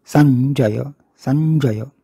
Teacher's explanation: स आहे, त्याच्या पुढे अर्धा ञ आहे. त्याचा मागच्या वर म्हणजे स मधल्या अ वर आघात होतो. त्यानंतर अल्पयती, किंचित वेळ आपण थांबतो आणि मग जय.